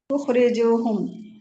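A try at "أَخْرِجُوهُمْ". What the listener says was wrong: उखरिजू नहीं, उखरिजू कहिए, यहाँ पे जबर है, अखरिजू। अलग कर दें, आप हम को भी छोड़ दें, अखरिजू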